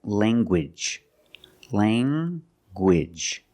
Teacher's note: You have the nasal sound, lang, and the hard g. Gwidge. Language.